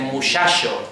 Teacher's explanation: Aquí en Andalucía y en el Caribe en general, en las zonas costeras de América, hay la tendencia a que la che se pronuncia como she